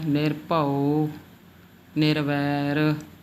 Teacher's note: ਸਿਹਾਰੀ ਜਿਹੜੀ ਹੈ ਲਘੂ ਮਾਤਰਾ ਹੁੰਦੀ ਹੈ ਛੋਟੀ ਮਾਤਰਾ ਮੰਨੀ ਜਾਂਦੀ ਹੈ ਸੋ ਇਹਨੂੰ ਜਿਆਦਾ ਲੰਬਾ ਨਹੀਂ ਲੈ ਕੇ ਜਾਣਾ